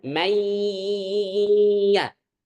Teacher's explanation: dalam pengucapannya itu presentasinya di hidung dan di mulut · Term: gunnah